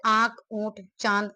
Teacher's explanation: अनुनासिक के उच्चारण में मुंह से अधिक एवं नाक से बहुत कम हवा सांस निकलती है